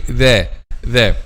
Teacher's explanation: the tip of the tongue touches the edge of upper two front incisors